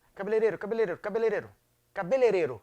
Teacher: Você engoliu o I porque ele é semivogal. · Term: ditongo decrescente